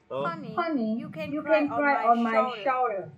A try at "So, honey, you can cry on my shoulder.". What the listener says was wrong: My shoulder. Okay, oh shoulder. Đó, thi thoảng thì cái âm nguyên âm của mình nó vẫn hơi bị lệch lệch một tẹo, chỉ cần để ý khẩu hình thôi.